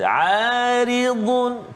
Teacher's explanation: Aridun, dun, terasa tepi lidah kita. Dun, kan, huruf dad, tebal, kan, terangkat lidah kita